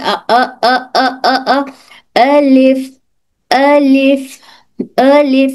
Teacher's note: मुंह का खाली हिस्सा यानी अलज अलजऊफ। तो इस मुंह के खाली हिस्से से एक हर्फ अलिफ अदा होता है।